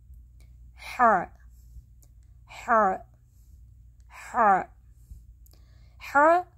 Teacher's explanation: حلق کے درمیانی حصے سے سانس اور آواز دونوں کا نکلنا چاہیے